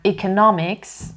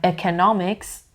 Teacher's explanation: تفاوتشون توی pronunciation vowel sound اولش هستش که هم به صورت ا میتونه تلفظ بشه هم ای میتونه تلفظ بشه. چه بگم economics چه بگم economics both are correct.